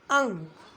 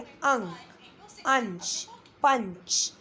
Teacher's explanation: अनुस्वार के उच्चारण में नाक से अधिक आवाज़ या सांस निकलती है, मुख से नहीं निकलती। जैसे अंक, अंक में अ से नहीं निकल रही, मुंह से नहीं निकल रही है, नाक से निकल रही है अंक।